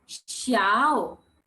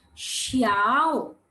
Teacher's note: it's the third tone the down and the up